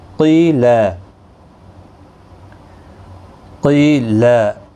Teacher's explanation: یہاں پر قیا مدہ ہے، ایک الف کی مقدار کے برابر کھینچیں گے